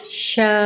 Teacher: اس کو 4 الف سے 6 الف کی مقدار لمبا کریں گے ، حمزہ آ گئی ہے، ہمیں تھوڑا سا یہاں پہ جھٹکا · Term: بڑی مد